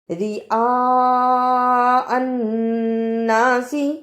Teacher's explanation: حمزہ کی آواز بھی آئے اور بڑی مد بھی ادا ہو